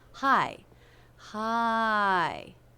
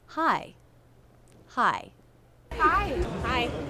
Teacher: It begins with the H consonant sound, and we have the I as in by diphthong. Again, make sure you drop your jaw enough for the first half of that diphthong.